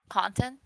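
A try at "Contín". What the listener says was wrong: The I is supposed to be pronounced like a double E cuz the little marking over it.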